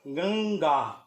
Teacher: इसका उच्चारण अनुस्वार की तरह ना होकर के पंचमाक्षर की तरह होगा, अर्थात इसका उच्चारण गंगा होगा, ना कि गंग्या।